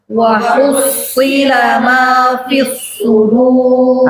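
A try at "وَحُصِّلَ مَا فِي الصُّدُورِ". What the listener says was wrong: bukan sin ya wa hussi bukan wa hussi si wa hussila ma fis sudur bareng 2 3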